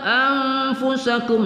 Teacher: nun sukun bertemu fa, kita baca ikhfa, kita dengungkan.